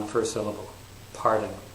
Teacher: So pardon has 2 syllables, but the primary stress is on the first syllable, pardon.